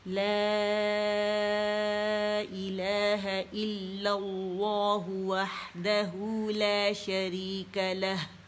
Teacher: مد منفصل بنے گی فور کاؤنٹس کھینچنے سے